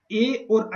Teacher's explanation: कंठ से भी बोले जाएंगे और तालु से भी, दोनों साथ में, कंठ और तालु दोनों का प्रयोग होगा ए बोलने में और ऐ बोलने में।